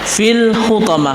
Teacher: bukan Fi tapi fil hutom karena Fi di sini bukan Mad thii di sini adalah gabungan daripada alif lam yaitu alif lam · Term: alif lam qamariah